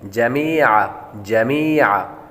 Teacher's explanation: मीम के बाद या हुरूफ मद्दा है, इसको लंबा करेंगे और आइन की आवाज़ निकालेंगे